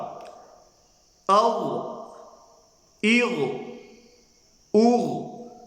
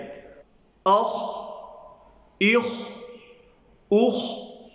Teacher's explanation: غین اور خا کو ادا کرنے کا جو مخرج ہے، ادا کرنے کی جو جگہ ہے، وہ ادنائے حلق ہے، اور ادنائے حلق گلے کا وہ حصہ ہے جو منہ کی طرف ہوتا ہے۔